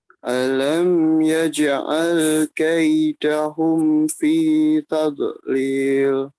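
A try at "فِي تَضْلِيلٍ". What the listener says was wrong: Yang berikutnya, tadnya jangan ada pantulan tad. Tad itu tidak, itu untuk da. Da sukun. Kalau ini do, ditahan sekuat mungkin, tidak memantulkan. Fi tadlil. Tadlil. Hanya tadi perhatian pada ya taub do sukun tidak dipantulkan ya. Kalau da sukun da tad. Kalau do tidak taub.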